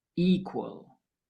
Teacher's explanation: With equal, the stress is on the first syllable